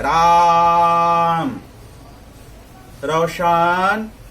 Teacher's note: अंत में स्वर पर हम जोर देकर के उसको हम प्रभावशाली बनाते हैं या पुकारते हैं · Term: प्लुत स्वर